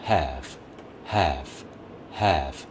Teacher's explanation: 이 단어도 have, have 이렇게 성대를 울려주지 않고 바람 소리만 남게 되죠.